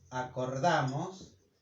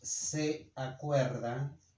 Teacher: we change the O for we when the syllable is stressed